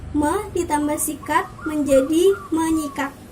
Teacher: fonem S pada kata sikat itu diluluhkan dan disenyawakan dengan fonem nasal NY yang ada pada prefiksme itu, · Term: peluluhan fonem